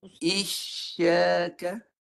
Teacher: Guna tengah lidah Huruf shin jangan guna muncung. Guna tengah lidah. Mulut lebar je.